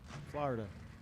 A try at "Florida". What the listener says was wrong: There's one O in Florida. Not two.